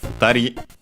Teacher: Let's check its accent, but should be on the last syllable. Yes, on the last syllable.